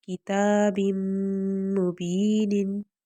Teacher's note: تا کے اوپر کھڑا زبر ہے، اس کو ہم ایک الف کے برابر لمبا کریں گے، اور پھر میم مشدد ہے اور اس سے پہلے ہمارے پاس تنوین ہے، تو ہم یہاں پر ادغام کریں گے